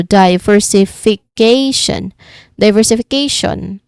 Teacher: There's six distinct sounds, among which the first and the fifth syllable is the stressed part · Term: multiple stresses